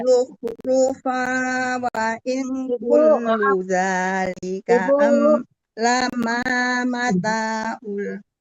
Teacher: Ibu kan saya udah bilang dengungkan faunya wazukhrufa kan ada waw di depannya, tanwin ketemu waw, nama hukumnya idgham bigunah, didengungkan ya Bu